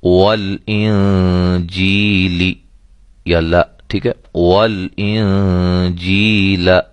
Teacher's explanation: یہ نون ساکن کی مثال ہے۔ نون ساکن کے بعد حروف اخفا میں سے جیم جو ہے وہ آئی ہوئی ہے، لہذا ہم یہاں اخفا کریں گے